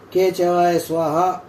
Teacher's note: కే శబ్దం గొంతు నుండి పుడుతుంది